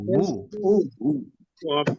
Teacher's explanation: ওয়াও পেশ উ, এটা আমরা বুয়ের মতো বলবো, বুয়ের মতোই, বা ঠোঁট লাগবে না, ঠোঁট গোল রেখে বললে যেটা হবে সেটা উচ্চারণ উ।